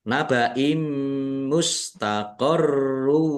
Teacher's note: kasroh tanwin bertemu dengan huruf mim, bacaan idgham bi gunnah masuk dengan mendengung. Mendengung mim ditandai mimnya ada tasdidnya.